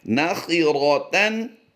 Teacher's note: ख़ा और रा की अदायगी को पुर करना है